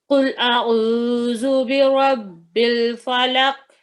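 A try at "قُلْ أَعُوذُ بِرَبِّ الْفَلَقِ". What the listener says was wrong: نہیں, کا پر کلکلا, فلق کاف ہلنا چاہیے. نہیں, فلق لق اتنے بولیں, فلق فلق.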